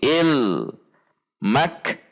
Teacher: kaf sukun tertahan kemudian keluar udara